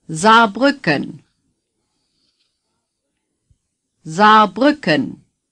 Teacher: two A's are pronounced as one long a